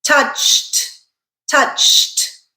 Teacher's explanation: CH is our unvoiced consonant sound · because the regular verb ends in an unvoiced consonant sound the sound we're adding is also unvoiced